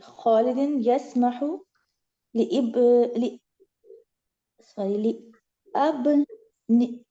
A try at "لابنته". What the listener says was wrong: الف جو ہے نا سائلنٹ ہے وہ کیونکہ حمزۃ الوصل ہے نا.